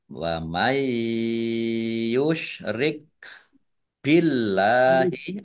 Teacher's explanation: Allahnya dibaca tipis karena harokat di depannya kasroh